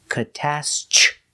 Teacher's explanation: The TR makes the ch sound like chicken.